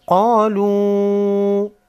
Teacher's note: قاف حروف مستعلیہ میں سے ہے، موٹا پڑھیں گے